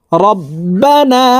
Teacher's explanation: তাশদি নুনের সাথে তিন সেকেন্ড পরিমাণ গুন্নাহ করে ধরে রাখবো এই গুন্নাহকে ওয়াজিব গুন্নাহ বলা হয় কারণ হরকতের বামে নুনে মিমে